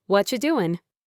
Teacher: They would probably say, "What you doing?" The what and are and you all blend together to become whatcha. The G at the end of doing is often dropped in informal speech.